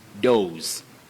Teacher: With what we call the voiceless sound, s, dose.